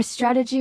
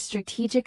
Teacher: Strategy stresses the beginning while strategic stresses the middle.